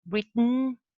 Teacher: And then we have nasal release, Britain. Yes, the plosion of the voiceless alveolar is released nasally through the nose